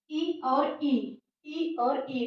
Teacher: यह निकल रहा है तालु से